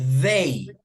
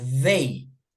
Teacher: Ese pronombre tiene un sonido vibrante, como si fuera una maquinita de pelar